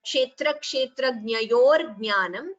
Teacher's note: there is a ra here between yo and jna, that should be chanted clearly